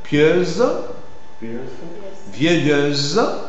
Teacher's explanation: eu articule fermé suivi du son Z